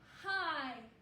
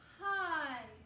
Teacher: that is a long sound i i hi for that open vowel